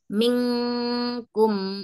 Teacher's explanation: nun mati ketemu ka itu seperti kita bahasa Indonesia kayak ada huruf n sama g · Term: Ikfa